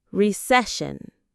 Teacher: The parts are re-see-shun. The stress is on that middle syllable, see.